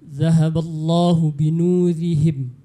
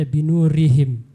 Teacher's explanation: Seperti ro baris bawah harusnya tipis dibaca ya, harusnya dibaca tipis. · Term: ro tipis